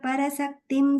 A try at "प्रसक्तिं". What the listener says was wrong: Third line, the prasaktim. I think you're saying para, you're saying prasaktim.